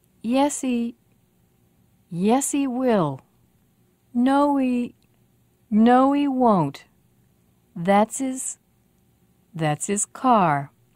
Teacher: if they're in the middle of a stream of speech we usually don't bother to pronounce the h so we link the sound before her h to the sound